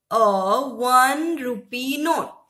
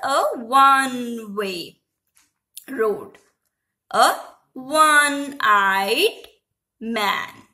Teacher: In the word one, it starts with the letter O, which is our vowel, but it produces a sound W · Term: sound of W